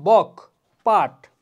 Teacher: এগুলো উচ্চারণের সময় আমার ধ্বনিটা কি বাতাসটা হচ্ছে মুখের ভেতর থেমে যাচ্ছে, রুদ্ধ হচ্ছে, এরপর বের হচ্ছে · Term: স্পর্শ ধ্বনি